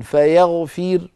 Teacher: نحو فيغفر، عند الوصل الراء مفخمة لأنها مضمومة، لما نقف بالسكون فيغفر نقف بترقيق الراء لأن الراء قد صارت ساكنة وقبلها كسرة فهي مرققة